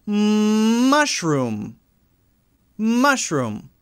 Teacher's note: when you say the m sound, there's a vibration there. So that's voiced.